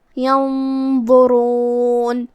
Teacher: تو ہم نون ساکن کو چھپاتے ہوئے لیکن غنہ کے ساتھ یہ حکم کو ادا کریں گے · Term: اخفاء